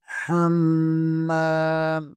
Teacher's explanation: حمام میم کے اوپر ہم یہاں غنہ کریں گے اور میم کے آگے الف مدہ ہے اسے تھوڑا سا کھینچیں گے